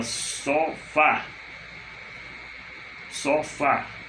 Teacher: A última sílaba é fá, é a forte, a oxítona.